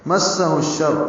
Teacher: میم سین سے ملائیں گے، ہا شین سے ملائیں گے، ادغام شمسی ہوگا